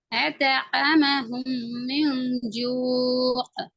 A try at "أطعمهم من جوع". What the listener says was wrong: இன்னும் கொஞ்சம் ஐன கடைசி ஆகி போதாது. أطعمهم من جوع. جوع அந்த ஆயின கொண்டு வா.